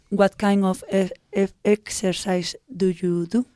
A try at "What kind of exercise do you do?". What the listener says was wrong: What kind of? La D de kind suena mucho. What kind of exercise?